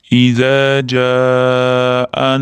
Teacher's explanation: Jaa da mat muttasil kelyapti. Ya'ni alif mat bilan hamza bitta so'zda ikkalasi bir joyga kelganligi uchun mat muttasil, ya'ni 4 harakat cho'zishimiz shart bo'lgan mat kelyapti.